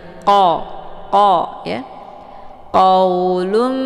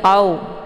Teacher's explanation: e bacaan qo ini ditebalkan letak posisinya yaitu di Pangkal lidah saat melafazkan huruf qnya pangkal lidahnya terangkat dan menempel di langit yang lunak